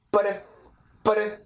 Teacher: The word but, it changes more to a schwa, but, and then this is a flap T, it links over, but if, and we keep linking.